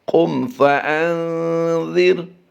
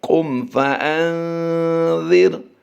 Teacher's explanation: یہاں پر ہم نے قاف کی ادائیگی کو پر کرنا ہے، میم ساکن میں ہم نے غنہ کرنے سے اجتناب کرنا ہے، بچنا ہے، اور حمزہ نون زبر ان کو ملائیں گے جیسے ہی تو زال کی وجہ سے ہم نے یہاں پر اخفا کرتے ہوئے غنہ کر دینا ہے، اور یہ غنہ زمانی کہلاتا ہے۔